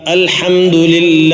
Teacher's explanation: കസർാണ് വന്നതെങ്കിൽ കസറിനു ശേഷമാണെങ്കിൽ നേർപ്പിച്ചാണ് ഉച്ചരിക്കേണ്ടത് അഥവാ ബിസ്മില്ലാ ബിസ്മില്ലാ അൽഹംദുലില്ല അവിടെ ലില്ലാ എന്നത് ശദ്ദോടു കൂടി ആണെങ്കിലും തർക്കീക്കോടുകൂടി നേർപ്പിച്ചാണ് ഉച്ചരിക്കുന്നത്